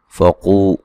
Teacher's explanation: क़ाफ को मोटा अदा करेंगे